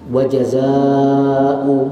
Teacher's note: alif yang mati bertemu dengan hamzah dalam satu kalimat. Sekurang-kurangnya empat harakat boleh sampai enam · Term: Mad wajib muttasil